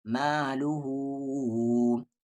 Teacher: میم کے ساتھ الف ما، لام پر پیش لو، مالو، ہا پر الٹا پیش ہو، مالو ہو۔ اب یہاں دیکھیں مد کے سمبل کے بعد حمزہ ہے، اس لیے اس مد کو 3 سے 4 الف کے برابر کھینچیں گے